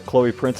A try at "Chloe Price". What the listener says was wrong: Oh, it's Chloe Price, not Prince, but, you know, you probably...